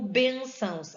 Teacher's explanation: a sílaba tônica está no ben